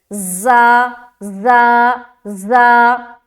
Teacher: जब भी हम ज़ा को अदा करेंगे ना तो आप गौर से सुने तो उसमें एक सीटी की सिफत जाहिर होगी · ज़ा जो है ना ये भी बारीक हर्फ है लेकिन ये सख्ती के साथ अदा किया जाता है